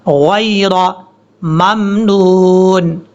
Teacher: اس یا کو لمبا نہیں کریں گے کیونکہ یہ یا لین ہے